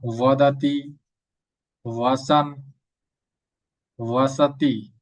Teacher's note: ঠোটে ঠোট না লাগিয়ে ব উচ্চারণ করার চেষ্টা করুন। দেখুন ও ও অর্থাৎ ওয়ার মত উচ্চারণ হবে। · অন্তস্থ বটা আমরা ব উচ্চারণ করব ঠোঁটে ঠোঁট না লাগিয়ে, ওয়ার মতো উচ্চারণ হবে।